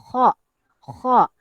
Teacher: Lidah terangkat ke lelangit saat mengucapkannya. Okey. Sehingga suara menjadi naik dan tebal. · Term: huruf isti'la